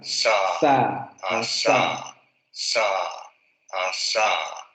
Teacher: La punta de la lengua está subiendo hacia la zona de los alvéolos. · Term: alveolar fricativo sordo